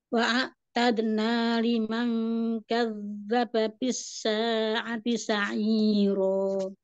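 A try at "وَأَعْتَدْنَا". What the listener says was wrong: Sekali lagi wa'ainnya bainiyahnya tawassut wa'atadna. Di huruf ainnya ya Om, belum mengalir.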